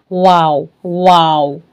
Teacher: वाव बोलना है वाव वी वाला साउंड नहीं लाना है